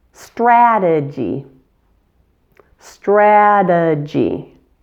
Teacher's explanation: The second syllable is a schwa, and the final Y is a long E sound.